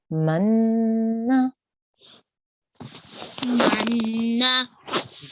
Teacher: we have a noon gunna because there's a noon with the shuttle on top so we need to make a sustained nasal sound here